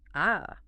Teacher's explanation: the first tone, this one is high and sustained. It just sits at the top of your comfortable speaking range and stays totally flat.